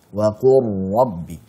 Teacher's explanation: hati-hati saat mengucapkan ra yang bertasydid, kita jangan sampai melebihkan getarannya. Jangan sampai kita berlebihan dalam menjelaskan getarannya.